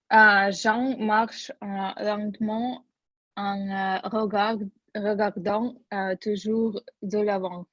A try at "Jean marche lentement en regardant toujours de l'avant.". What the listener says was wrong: Très bien, super, отлично.